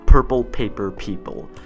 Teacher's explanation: there's like a burst of air that goes directly to the mic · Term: plosive noises